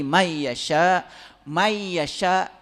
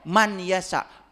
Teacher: Nun itu lebur sama ia itu namanya idgom bigunah